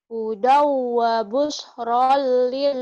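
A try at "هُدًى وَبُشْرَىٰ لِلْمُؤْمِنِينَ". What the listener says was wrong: Ro-nya panjang. Hudaw wa busyra. Hudaw wa busyra. Hudaw wa busyra lil mu'minin.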